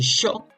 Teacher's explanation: mucho marcan el SH, el sh, mucho lo marcan